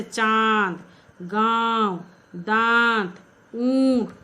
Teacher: अनुनासिक, अनुनासिक मतलब चंद्र बिंदु। अनुनासिक का उच्चारण नाक और मुंह की सहायता से किया जाता है, जैसे चांद, गांव, दांत, ऊंट आदि, ये सब नाक और मुंह के जरिए निकलने के कारण उसका नाम है अनुनासिक।